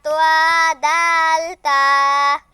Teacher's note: ১১ নম্বর মাখরাজ, জিহ্বার আগা সামনের উপরের ২ দাঁতের গোড়ার সঙ্গে লাগাইয়া